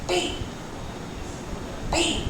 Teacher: साथ आए, फिर होंठ अलग हुए, दोनों होंठ पहले साथ आ रहे हैं, हवा इकट्ठी हो रही है होंठों के पीछे, फिर फिर हम दोनों होठों को सेपरेट कर रहे हैं और अब एक विस्फोट जैसा हल्का सा एयर के साथ साउंड निकलेगा।